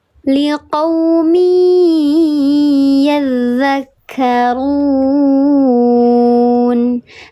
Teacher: Dibacanya dileburkan atau dimasukkan disertai dengan gunnah 3 harakat lebih utama. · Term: idgham bi gunnah